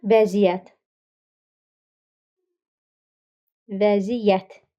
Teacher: Vəziyyət, məziyyət, səviyyə, səciyə, səhiyyə bir neçə söz var ki, sözün kökündə olan y-nın biri düşür.